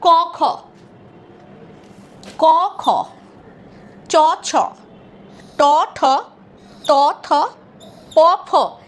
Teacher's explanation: এখানে উচ্চারণ করার জন্য আমাদের গলায় কিন্তু কোনো কম্পন হচ্ছে না, স্বরতন্ত্রের কোনো কম্পন হচ্ছে না। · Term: অঘোষ ধ্বনি